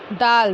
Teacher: खा दाल दाल दाल ज़बान की नोक और सामने के ऊपर वाले दो दांतों की जड़ से अदा होगा